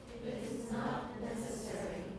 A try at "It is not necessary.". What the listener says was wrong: That's the right timing. 不只是 stop, 你还有那个停顿的时间还蛮长的.